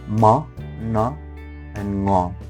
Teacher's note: the airflow is blocked in the oral cavity and released through a nose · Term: nasal